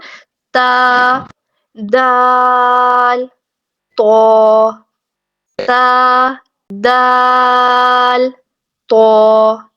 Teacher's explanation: بالکل آگے سے ثنایا کے تھوڑا سا پیچھے، وہاں سے کھردری سی جگہ ہے، اس جگہ کو نتا کہا جاتا ہے، اور یہ حروف نتا کے پاس سے ادا ہوتے ہیں، اس لیے ان کو حروف نتیہ کہا جاتا ہے۔